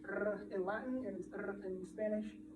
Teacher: Spanish has the alveolar trill, which is the r for their R